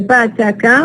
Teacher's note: all of them are voiceless because we don't have vibration of the vocal cords, and all of them are stops because we stop the air completely and then release it · The first one is bilabial, the second one is alveolar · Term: voiceless stops